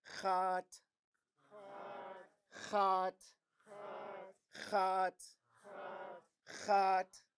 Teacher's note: indigenous places because they're all indigenous places so the first word it has a long high vowel and then it ends with a T